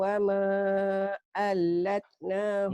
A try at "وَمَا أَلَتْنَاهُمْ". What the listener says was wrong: Enggak, wama alat enggak ada tasydidnya. Wama alatnahum ya.